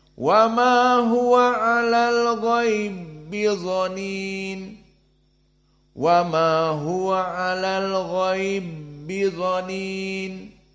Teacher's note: maka dijadikan idgham yang pertama disukunkan ataupun dihilangkan masuk kepada ba yang kedua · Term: idgham alkabir